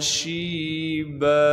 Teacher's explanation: شین میں تفشی ادا کریں گے یعنی شین کی آواز کو صاف کر کے ادا کریں گے، شین کے بعد یا مدہ ہونے کی وجہ سے شین کو 1 الف کے مقدار کھینچیں گے، با پر جب وقف کریں گے پھر با کو 1 الف کے مقدار کھینچیں گے، با کے اوپر یہ چھوٹی سی نون ہے، اسے نون قطنی کہتے ہیں۔